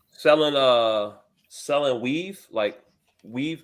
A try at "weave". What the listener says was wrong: Make sure you pronounce that V correctly.